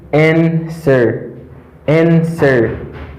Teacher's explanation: The letter W is silent. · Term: silent letter W